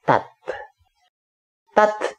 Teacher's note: maka saat kode vokalnya diketuk terbentuk suku kata tertutup berakhiran t fathah dan tasdidnya dibaca menyatu fathahnya sepertinya bergetar sehingga bunyi konsonan t seperti dimajukan bunyinya seperti dilekatkan ke fathah